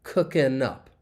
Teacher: And often when that G is dropped, it just makes this easier to say because linking can occur. And we can link that final N sound with up, cookin' up.